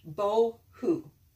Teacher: So bow, H, and this is a vav with a dot in the middle. And this is one of the times when vav is going to act like a vowel. It's not making a V sound here. This is one of the two ways you can make the oo sound. So this is the vowel that goes with the hey.